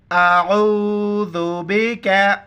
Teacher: आइन को गले से अदा करेंगे और आइन को वाव के साथ मिलाएंगे।